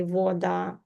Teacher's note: in some places they say voda more like o